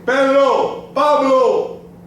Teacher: you say po the air comes out and move the paper in Spanish the P has no puff of air · although I'm yelling the paper is not moving because we do not let any air out